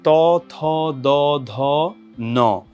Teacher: উচ্চারণ করলেই বোঝা যায় সেটা হচ্ছে জিহ্বার যে সামনের অংশটা সেটা প্রসারিত হয় এবং যেই জিহ্বার অগ্রভাগ বা জিহ্বার যে আগা সেটা হচ্ছে ওপরের দাঁতের পাটির যে গোড়া সেই জায়গাটাতে যে স্পর্শ করে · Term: তবর্গীয় ধ্বনি